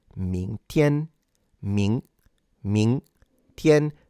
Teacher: the G is not pronounced and it's only used to fully nasalize the N